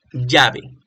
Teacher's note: Usan mucho la sh para decir lo que nosotros decimos llave.